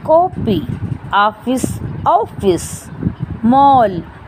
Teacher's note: आ और ओ के बीच की साउंड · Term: आ की ध्वनि